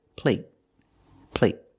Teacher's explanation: the stop T at the end makes the long a a little shorter